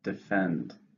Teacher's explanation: How many syllables in defend? 2, stresses on the second.